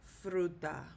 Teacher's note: So no, what we do is it ends in a vowel and so the stress is going to be on the letter U when we pronounce it. There is not a written accent mark, but the stress is on the U.